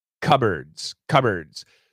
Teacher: when we say cupboards there's no p the p is gone